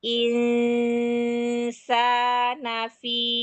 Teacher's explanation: Nunnya jangan dibaca jelas tapi ada dengung yang harus ditahan. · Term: ikhfa